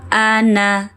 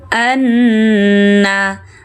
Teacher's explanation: Bila nun bertasdid ya, ditekan, ditahan dan berdengung.